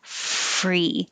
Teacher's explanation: now the top teeth are on the bottom lip with air flow